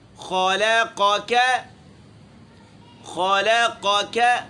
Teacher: قاف موٹا ہے اور دوسرا کاف باریک ہے